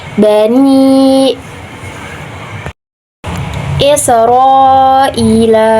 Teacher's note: Cara bacanya panjang 2 sampai 5 harakat